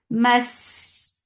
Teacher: Mas for fatha upon jaws attached sin will get sifa of rakhawa. And it is light and it has safir.